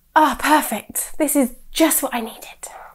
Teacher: The tone we use is very flat, even though our words are very strong.